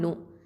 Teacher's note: நூன் அப்படிங்கிறது வந்து தரஃபுல் லிசான், நுனி நாவு எழுத்து.